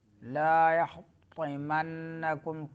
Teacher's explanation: طا زبان کی نوک جب سامنے دانتوں کے جڑوں سے لگے تو طا ادا ہوتا ہے